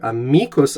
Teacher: The word in Latin is amicus with a long I and an accent on the middle syllable there.